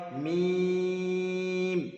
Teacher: 2 ঠোঁটের শুকনো অংশ মিলিত হয়ে উচ্চারিত হয় মিম। 3 আলিফ টান হবে মিম।